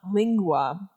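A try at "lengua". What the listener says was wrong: Lingua. an E, not an I. Spanish doesn't really use I's.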